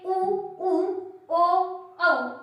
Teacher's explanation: बोलते टाइम मुंह की शेप गोल होती है, वृत्ताकार स्वर कहलाते हैं।